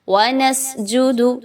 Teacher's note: سین میں سیٹی کی آواز کو لائیں گے، حمز کی بھی خوبی آئے گی